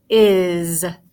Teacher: I says I. The S, though, this time in this word, it sounds like a Z. So it's is.